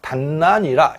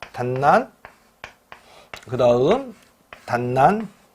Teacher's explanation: 뒷난으로 발음될 것으로 추정을 합니다. 그래서 디귿이 니은의 동화가 된 것으로 이제 바라보는 거죠